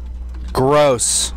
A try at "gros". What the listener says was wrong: No, not gross. Grow. Which G-R-O-S, but you say grow.